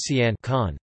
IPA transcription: caun